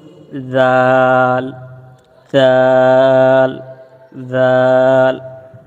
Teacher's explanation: এই অক্ষরের উচ্চারণ হবে জাল খুব নরম ভাবে উচ্চারিত হয় এবং চার আলিফ টেনে আমরা এই অক্ষরটি পড়বো যেমনি ভাবে পড়বো জাল জাল জাল এরপরে আসি র র র